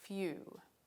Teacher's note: If you listen to it, you'll hear that there's a y sound after the f sound.